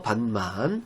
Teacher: 밭 같은 경우는 티읕, 밭, 티읕이 디귿으로 바뀌고 그리고 비음화가 돼서